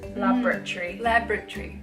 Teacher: we kind of like smush the middle syllable